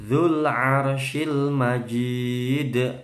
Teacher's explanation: Dzu, bukan zu ya, hati-hati. Dzul, nggak mantul lamnya. Dzul arsyil, roknya tebal, arsyil, syennya tebal, majid, qalqalah kubro dan mat arid lisukun.